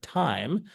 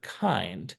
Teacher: as that T sound starts, there's kind of this downward swoop in the sound energy. Whereas when the K starts in kind, there's kind of an upward swoop.